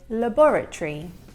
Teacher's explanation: in English we would say labora-tree but he has pronounced every single syllable of the word which natives do not actually do.